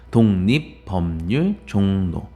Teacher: 리을이 니은으로 바뀌는 거예요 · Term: 리을의 비음화